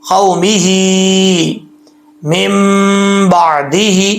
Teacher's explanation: واؤ جو ہے لین ہے یہاں پہ، مد اس کو لمبا نہیں کریں گے واؤ کو